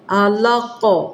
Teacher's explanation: قاف کے اوپر جزم پڑ جائے گی تو یہ یہاں پہ قلقلہ ہوگا، علق، علق، قلقلہ کریں، علق، ٹھیک، باقاعدہ نمایاں ہونا چاہیے، عین کو بھی پر کریں اور قاف کو بھی پر کریں